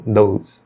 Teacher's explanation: muitas vezes eles vão acabar pronunciando com um som de D bem sutil mesmo